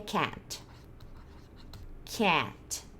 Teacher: Eu saio do A e vou pro E. Bem rapidinho. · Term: som da borboleta